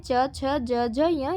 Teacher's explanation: च च का उच्चारण स्थान तालू